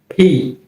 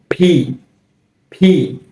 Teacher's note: পি, তবে এর উচ্চারণটা হচ্ছে ফি। ফি, অর্থাৎ আমাদের দুটি ঠোঁট একসাথে লেগে যাবে, তারপর ভেতর থেকে একটু ধাক্কা দেওয়ার মতো বাতাস বের হবে